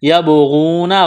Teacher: یعنی ہلا کر پڑھیں گے۔ یبغون، غین کو موٹا کرنا ہے، واو مدہ ہے، الف کے برابر کھینچنا ہے